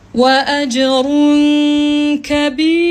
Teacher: Dan bila dalam keadaan waqaf, fa halat ra muraqqaqah. Dalam keadaan waqaf tapi dalam keadaan huruf ra itu dibaca dengan nipis.